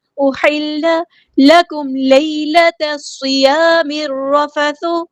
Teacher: میم ساکن پہ اظہار شفوی ہو رہا ہے، یہاں پہ ٹائم نہیں دینا۔